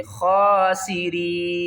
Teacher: وقف کی صورت میں نون کو ساکن کریں گے اور را کو باریک پڑھیں گے اور تین الف کی مقدار کھینچ کر پڑھیں گے، خاسرین۔